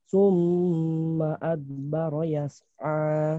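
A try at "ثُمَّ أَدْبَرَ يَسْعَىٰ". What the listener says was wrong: Mantul baknya. Dalnya mantul. Adbara. No. Itu belum mantul. Dipantulkan. Adbara.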